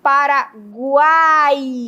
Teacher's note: o U fica mais fraco, o A fica mais forte e o I fica também mais fraco. Nós tendo, nós temos aí o encontro de uma semivogal, de uma vogal e de uma semivogal, portanto um tritôo. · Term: tritongo